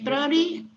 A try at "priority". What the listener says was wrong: Priority. No, priority. It's 1, 2, 3. Priority. 4 syllables. When you have trouble, you have difficulty to pronounce a word, try to say it slow. Priorities, like this. Priorities.